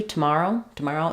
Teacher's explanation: have awah there so for tomorrow t and then we have the stress falls on the second syllable ma with the a vowel